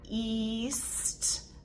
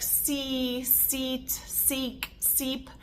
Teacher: we're starting the word in the correct tongue position we just have to keep it there for the S and then we end the word in the exact tongue position